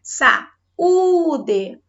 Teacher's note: A sílaba mais forte foi justamente onde nós temos o U.